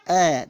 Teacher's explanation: तो अ का उच्चारण स्थान कंठ हो जाएगा।